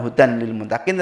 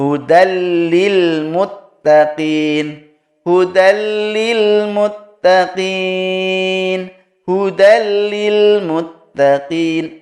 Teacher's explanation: tanwin ketemu dengan lam maka dihukumi idgham bilagunnah lembur ya tapi tidak dengan dengung maka dibacanya bukan hutan lilmutaqin